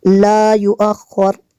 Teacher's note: لا یؤخر، یہاں پہ میم وقف لازم کی شارٹ فارم ہے، چھوٹا سا جو میم لکھا ہے، تو یہاں پہ اگر وقف کریں گے تو را کو ساکن کر دیں گے